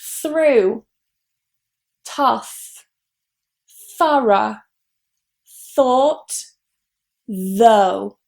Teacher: It's simply just those two sounds the voiced th, th, and then that diphthong ou.